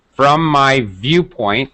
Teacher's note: make sure you're getting the V with the teeth and a lot of lip